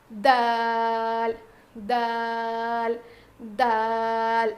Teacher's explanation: زبان کی نوک کو سامنے کے 2 دانتوں کے جڑ میں لگانے سے دال ادا ہوتا ہے